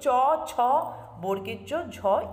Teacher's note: ঝয় এই ব্যঞ্জন ধ্বনিগুলি উচ্চারণের উচ্চারণ করলেই তোমরা বুঝতে পারবে যে জিউহার যে মধ্যভাগ সেটা মুখ বিবরণের ভেতরের যে ওপরের অংশে তালু রয়েছে তাকে স্পর্শ করছে তাই এই পাঁচটি ব্যঞ্জন ধ্বনিকে বলা হচ্ছে কি তালব্য ব্যঞ্জন এরপর